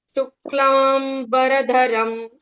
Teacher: ये आघात का नियम है। यहां पर आधे क और आधे म को स्ट्रेस देकर ही पढ़ा जाता है